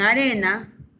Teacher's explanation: En arena, re es una sílaba tónica.